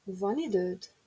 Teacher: One időd is a statement. We can form it into a question by rising intonation of the statement.